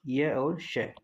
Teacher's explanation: य और श का उच्चारण स्थान अगर आपसे पूछा जाए तो तालव्य होता है